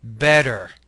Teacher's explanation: if you have a T or a D in the middle of a word in American English, it might very well be the flap sound